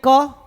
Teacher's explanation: जब आप का बोल रहे हैं तो आप देख रहे होंगे कि जीभ ना तालु को टच कर रही है, ना मूर्धा को, ना दंत को, ना ओष्ठ को। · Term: कंठ